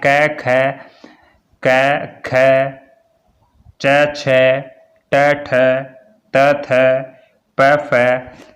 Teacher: पहला और दूसरा जो व्यंजन है वो सारे के सारे क्या हैं, अघोष हैं।